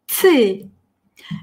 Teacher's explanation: есть вот «т» среднее между «т» и «ц»